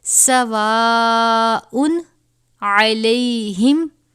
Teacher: تنوین کے بعد حروف حلقی میں سے عین آیا ہے تو یہاں پر غنہ نہیں کریں گے.